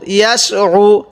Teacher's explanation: আইনটা একটু চাপ দিয়ে পড়ব আমরা অনেকেই আইনটাকে হামজা পড়ে ফেলি আমরা আইনটাকে হামজা পড়ব না